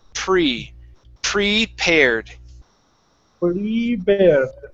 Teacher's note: You're saying bree. Now a P is an unvoiced sound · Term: P sounds